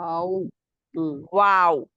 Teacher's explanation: वाव के लिए तो पहले ही होठ गोल करते हैं बिल्कुल ओ की शक्ल और उसमें एक सुराख रह जाता है